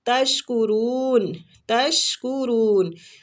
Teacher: تشکرون، شین باریک سیٹی والا